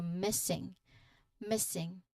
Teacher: The stressed part is in the first syllable.